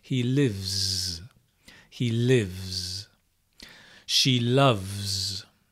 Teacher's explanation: when you add the s the s is pronounced z the voiced continues the voiced sound moves into the next consonant